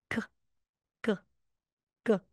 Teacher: hindi na po siya aspirated. Walang H. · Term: double consonant